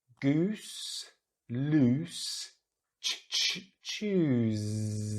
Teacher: They all have this long vowel, this ooh, rounding the lips, putting the tongue back, ooh sound.